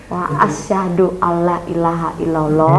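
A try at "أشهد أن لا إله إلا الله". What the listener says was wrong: Loh, yang awal tanpa wa. Ya, asyhadu alla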